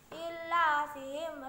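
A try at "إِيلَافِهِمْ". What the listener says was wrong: Ila bukan illa, bukan LLA, bukan ada tasjidnya. Ila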